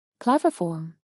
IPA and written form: ˈklæv əˌfɔrm (Claviform)